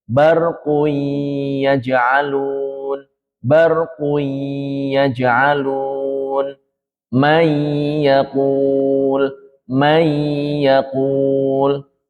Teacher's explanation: dengan meleburkan nun sukun ke huruf idgham yang empat ini dan disertai dengung sekadar dua ketukan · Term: idgham bighunah